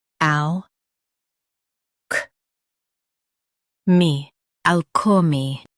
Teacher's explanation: Stress all and keep k light.